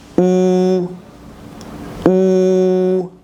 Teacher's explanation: c'est un son postérieur. Il vient du fond de la bouche. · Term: son ou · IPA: [u]